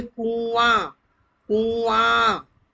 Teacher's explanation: आ में आवाज आ रही है, नाक में से भी मुंह में से, तो आ पर लग जाएगा चंद्र बिंदु। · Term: अनुनासिक